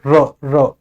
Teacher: र महसूस करो जिभ्या के आगे वाले हिस्से में कंपन हो रहा है वाइब्रेशन।